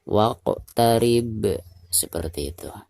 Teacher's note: Dan dihukumi qalqalah kubro karena posisinya ada di ujung ayat atau di ujung bacaan ya. Jadi cara membacanya harus dipantulkan dengan suara pantulan yang tebal.